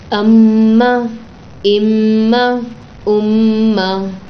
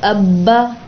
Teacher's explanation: صرف نون اور میم پڑھتے وقت یہاں پر آپ کی وائبریشن ہوگی نوز کے پاس، جو ہڈی اسٹارٹ ہوتی نا اس کے اوپر آپ رکھ لیجئے.